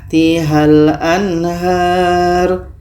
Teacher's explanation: tanwin bertemu dengan Hurufnya yang 15 ini itu dibaca secara samar dan dibaca dengan dengung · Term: ikhfa